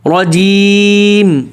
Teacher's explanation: آگے را میں اکثر لوگ تکرار کرتے ہیں، نر، نر سا ہو جاتا ہے، نر، اس طرح کی آواز نہ نکلے، ایک را کے نکلے، نر، نر رجیم۔ آگے جیم، اس کو بالکل باریک اور کسرہ اس کا زیر واضح کرنا ہے، جیم، نر رجیم، رجیم اس طریقے سے بولتے ہیں، یا بہت سے لوگ اس کو جیم تو بولتے ہیں لیکن موٹا کرتے ہیں، نر رجیم، رجیم موٹا نہیں بولنا، رجیم پتلا ایسے۔